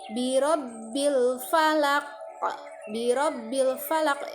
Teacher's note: Namun ketika ini di akhir ayat sebaiknya kita berhenti, dan ketika berhenti huruf qaf, walau ketika waqaf dimatikan maka harus dibaca memantul karena termasuk hukum tajwid qalqalah, sehingga dari sifat huruf qafnya sendiri harus memantul ya.